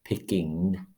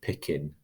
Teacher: that's the velar nasal phoneme in standard English